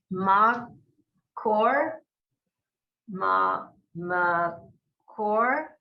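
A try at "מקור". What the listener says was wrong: You sounds like you're saying or, which would be an oo. So it's koer. Okay, makoer.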